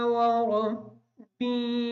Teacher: ربی کی جو را ہے اس را کو پر پڑھیں گے